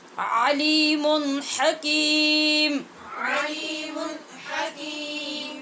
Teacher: عین کو وسط حلق سے، ہا کو بھی، اور علیمن کی میم پہ جو تنوین ہے وہاں پر اظہار.